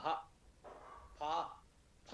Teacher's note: फ फ में भी हल्की हा की ध्वनि आ रही है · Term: महाप्राण